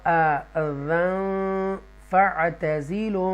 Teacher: یہاں دیکھیے گا، یہاں ہم نے اخفا کیا، تنوین کے بعد فا اخفا آ رہا ہے اس لیے گنہ بھی کیا ہم نے